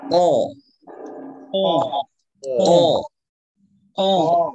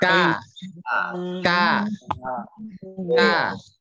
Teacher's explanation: dari segi suara qaf itu tebal. Kalau kaf tipis.